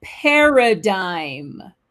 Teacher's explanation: le G ne se prononce pas et vous avez l'accent tonique sur la première syllabe